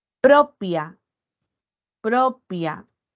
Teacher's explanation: Recae en la sílaba pro, la penúltima, y era grave.